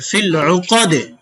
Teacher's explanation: আইন পেশ উ, কফ জবর ক, উকা, দাল জের দি, উকাদি, ফিল উকাদি, ওকফের সময় দাল সাকিন হয়ে যাবে, ফিল উকাদে হয়ে যাবে।